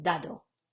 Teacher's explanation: en italiano las d son siempre oclusivas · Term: d oclusiva